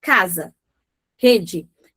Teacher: Então, você percebe que é uma vogal ali pura, ou seja, a emissão que é combinada, né, num timbre único em relação a isso